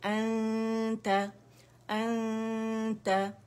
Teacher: अब ता की वजह से क्योंकि इख्फा हो रहा है, ठीक है, तो हमने क्या किया है कि नून की आवाज को हमने छुपाया है, किसकी वजह से, ता की वजह से, और बारीकी से अन ता, हमजा फतह नून सुकून अन ता फतह ता ता।